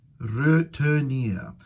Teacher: So it's 4 vowel sounds there. Schwa, schwa, I, schwa.